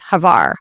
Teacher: You just want to kind of combine the H and the V a little quicker. So like a little closer together.